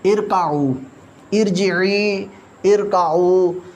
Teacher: را ساکن سے پہلے عارضی زیر ہو تو را کو پر موٹا پڑھیں گے.